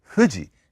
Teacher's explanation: bilabial fricative as the quote unquote F